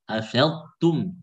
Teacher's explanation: Afadtum jangan tum tapi afadtum taknya tipis.